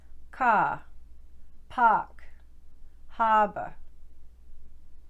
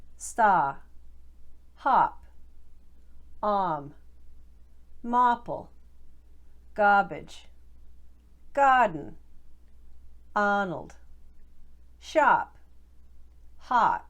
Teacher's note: hear how the vowel sound is held for just a little bit